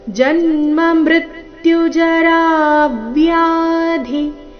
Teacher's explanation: ಜರಾ ವ್ಯಾಧಿ ರಾ ದೀರ್ಘ ಹೇಳಿ ನಂತರ ಆಘಾತ